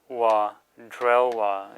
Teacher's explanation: Notice here the ba as the last syllable of a word changes to wa. So it's no longer pronounced ba but wa.